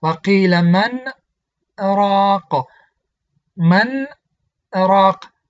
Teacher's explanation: من گفتم آواز را به مقدار 10 حرکت قطع کردم، با همون نفس که من خواندم، با همون نفس راق را ادامه دادم، یعنی نفسی نو نگرفتم. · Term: سکت